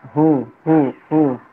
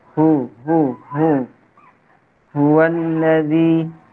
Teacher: Huwallazi itu hu dari pangkal tenggorokan. Hu termasuk huruf hamas ya. Keluarnya nafas.